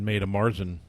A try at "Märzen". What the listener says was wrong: Yeah, in German, when you have the umlaut over the A, it's pronounced like a long A in English. Märzen.